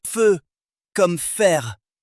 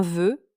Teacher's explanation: On obtiendra un feu sourd non voisé ou un veu voisé. Feu comme fer, veu comme verre.